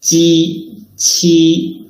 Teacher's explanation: Okay, Ji, Qi, and Xi are known as coronal. The surface of the tongue touches the hard palate when pronouncing Ji and Qi, while Qi brings out a strong L flow.